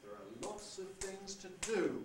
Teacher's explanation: do we've got rhythmic beats on lots of things to do three rhythmic beats but only two pitch prominent syllables only two accented tonic stress syllables